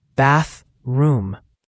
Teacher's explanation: And bathroom has that tricky th sound again. Tongue between your teeth for the first th. The second th in room is often silent, just a soft m sound.